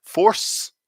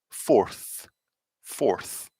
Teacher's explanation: force you can see my tongue is all the way back in my mouth yeah but with fourth it finishes here right between my teeth